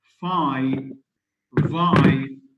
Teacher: F is voiceless, v is voiced. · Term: labiodentals